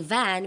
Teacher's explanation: we gently bring the bottom lip close to the upper teeth, allowing the airflow to create a buzzing sound similar to F but voiced. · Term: voiced labiodental fricative